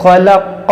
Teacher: والنہار اذا تجلی، وما خلق الذکر والانثى، یہاں پر دیکھیں الف مدہ ہے وما، اور یہ خا حروف مشتعلیہ، قاف حروف مشتعلیہ، اس دونوں کو موٹا کریں گے